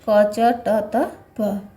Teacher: अल्प प्राण क्या है? जिन वर्णों के उच्चारण में श्वास अल्प मात्रा में मुख से निकलती है तथा हकार जैसी ध्वनि नहीं होती है